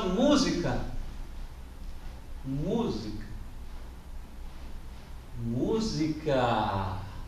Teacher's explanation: música é uma palavra proparoxítona